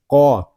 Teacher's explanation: قاف کو پر پڑھیں گے کیونکہ قاف حروف مستعلیہ میں سے ہے